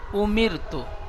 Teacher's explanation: র সাকিনের ডানদিকে জের এসেছে তাই রকে বারিক করে পড়ব